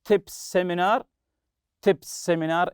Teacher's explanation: it's as if it's one s